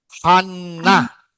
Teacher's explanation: Bagus. N ada titik di dalam. N-nya seperti dibaca dua.